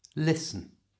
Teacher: the T in listen is silent, so it's not listen, it's listen.